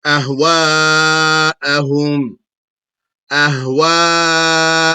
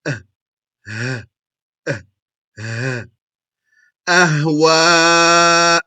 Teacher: From the bottom or extent of the throat, meaning what is closest to the chest, come the hamza and the ha.